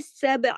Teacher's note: با پہ کلکلا ہوگا، با پہ آواز کو ہلانا ہے ، کیونکہ با کتبن جدن کا حرف ہے، کتبن جدن ایک